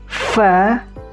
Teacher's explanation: Jadi hams ada nafas angin ketika mengucapkan huruf fa. Jadi ada angin yang keluar.